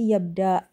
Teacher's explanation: Maka di tadi di ibdal menjadi yabda gitu ya. U-nya diganti ibdal alif sukun, alif mat gitu ya